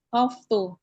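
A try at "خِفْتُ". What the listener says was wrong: Enggak, di kasrah dia, Om.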